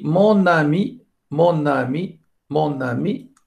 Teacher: vous mettez la consonne finale et la voyelle du mot suivant dans la même syllabe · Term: enchaînement